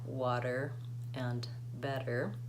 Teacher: we use the flap T the one that sounds a little bit like a D sound like water and better when the T sound is between two